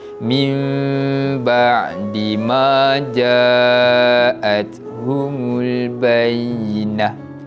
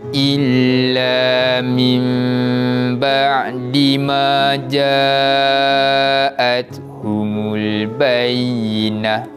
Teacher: Tu tengok tu, atas huruf nun ada mim kecil yang ekornya ke bawah. Maka cara bacaan iqlab ini kita akan gantikan bunyi bacaan nun mati kepada huruf mim. Maknanya mim baris bawah masuk pada huruf mim dan dibaca dengan bacaan dengung.